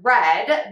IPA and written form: rɛd (READ)